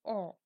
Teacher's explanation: এই স্বরধ্বনি উচ্চারণের সময় জিহ্বা সর্বনিম্ন স্থানে অবস্থান করে আর মুখগহ্বরের যে শূন্যস্থান থাকে সেটা প্রায় একদমই ফাঁকা মতো থাকে। অর্থাৎ ঠোঁট এই সময় সম্পূর্ণরূপে খুলে যায়। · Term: বিবৃত স্বরধ্বনি